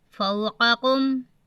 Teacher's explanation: موٹا قاف باریک کاف، ادائیگی کو دیکھتے ہوئے پڑھنا ہے